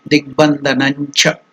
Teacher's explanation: since the next word is cha, then the nasal sound Anunasika will be influenced by the cha